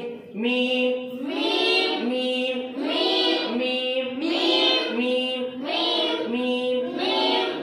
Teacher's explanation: जहां से मीम अदा होता है वहां से मीम के निकलने की जगह दोनों होठों का खुश्की वाला हिस्सा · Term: मीम का मखरज